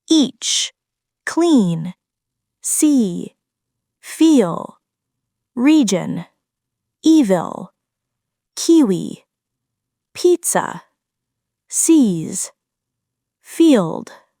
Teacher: This is the long, tense E vowel sound. The tongue is high and forward, and the sound lasts longer. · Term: long E vowel sound